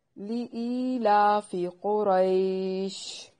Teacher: لِإِيلَافِ قُرَيْشٍ، لام کو لمبا نہیں کرنا، ای یائے مدہ ہے، یا ساکن سے پہلے کسرہ آئے تو اسے یائے مدہ کہتے ہیں۔